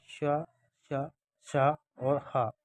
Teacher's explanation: इनको ऊष्म व्यंजन माना गया है। इनके उच्चारण में जो है वो घर्षण से उत्पन्न वायु का निष्कासन होता है।